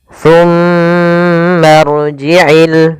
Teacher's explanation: Kemudian pada lafal Ada bacaan gunnah, yaitu cara membacanya mimnya ditahan dulu, baru dibaca ma-nya.